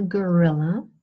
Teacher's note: in English you have a schwa here, gorilla, and then you have a different type of R. And in German you say gorilla.